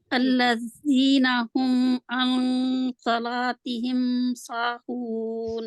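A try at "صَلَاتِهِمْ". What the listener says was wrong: साद को और मोटा करना है, साला साला। साहून कैसे है? सीन के आगे अलिफ है? मद लेटर है जी? सीन मद लेटर है कि नहीं? मद असली इसमें पाई जा रही है कि नहीं? पाई जा रही है, तो फिर इसको लंबा क्यों नहीं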